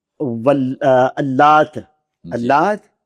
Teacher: تو بہر صورت اللات میں لام موٹی نہیں